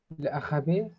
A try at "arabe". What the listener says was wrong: Ahab is Ahab, not Ahabe. It's Ahab.